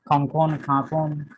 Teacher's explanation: এগুলো চন্দ্রবিন্দু, বাংলার মতোই চন্দ্রবিন্দু উচ্চারণ হবে ন।